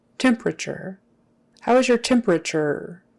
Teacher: The biggest accent is on the first one. The second most important accent is on the last syllable.